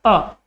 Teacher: अ का उच्चारण जीभ के कौन से भाग से होता है, मध्य भाग से होता है। तो ध्यान रखना आपका मध्य स्वर अकेला कौन सा है, अ।